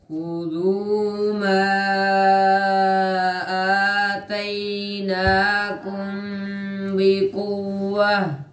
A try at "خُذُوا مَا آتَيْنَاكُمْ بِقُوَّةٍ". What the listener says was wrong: شاباش.